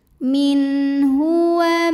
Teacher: Maka nun sukun kita bunyikan dengan jelas. Jadi masih bunyi n dan tidak perlu ditahan. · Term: izhar halqi